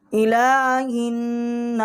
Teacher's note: جو ہا ہے یہ ہمارا حروف حلقی ہے، اس کو ہم حلق سے نکالیں گے